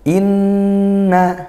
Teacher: Kemudian di ayat yang kedua, inna. Nah, ini gunnah karena nun bertasydid sehingga kita baca dengung